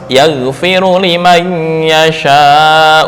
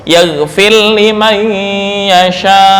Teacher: membaca idgham mutaqaribain, yaitu ra bertemu lam